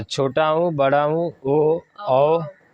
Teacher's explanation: वे स्वर जिनके उच्चारण में होठों की आकृति कैसी हो जाती है? वृत्त के जैसी हो जाती है, गोल। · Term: वृत्ताकार स्वर